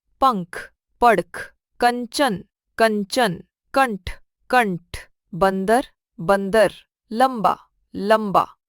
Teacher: अनुस्वार का उच्चारण करते समय वायु केवल नाक से निकलती है।